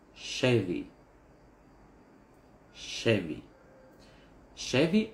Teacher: ударение на первый слог